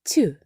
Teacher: у слові тюльпан м'якою від букви ю стала буква Т